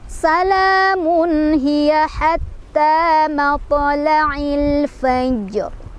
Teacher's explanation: La-nya mad tabi'i karena ada fathah berdiri di atas lam, dibacanya panjang 2 harokat. Salamun ada izhar karena tanwin dhammah bertemu dengan ha, bacanya jelas.